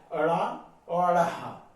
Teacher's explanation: उच्चारण में जीभ मूर्धा से लगकर एकदम नीचे आ जाती है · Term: उत्क्षिप्त